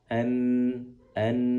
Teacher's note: berasal dari ujung lidah bagian bawah yang ditempelkan ke langit-langit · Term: nun